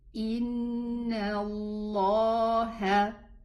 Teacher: The name of Allah is preceded by a noon fatha. This is why we are going to elevate the lam in our pronunciation.